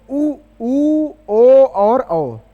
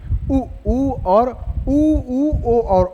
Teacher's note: वर्तुल माने वृत्ताकार क्रम में मुख को बनाकर, ओंठों को बनाकर बोले जाने वाले स्वर। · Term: वर्तुल स्वर